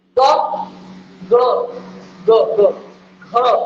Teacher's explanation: लग रहा है तुरंत कंपन, इतना बड़ा नहीं होता है कि भूकंप आ जाए, हल्का वाला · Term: सघोष ध्वनियां